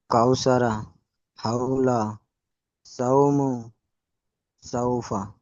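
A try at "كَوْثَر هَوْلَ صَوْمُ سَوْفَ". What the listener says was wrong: মাশাআল্লাহ, খুব সুন্দর হয়েছে।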